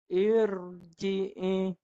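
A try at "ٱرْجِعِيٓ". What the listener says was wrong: Ra tebal. Gulung lidah, hujung belakang lidah. Irji'i.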